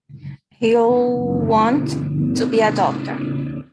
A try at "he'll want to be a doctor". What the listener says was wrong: just one little thing on your pronunciation just to put those two t's to one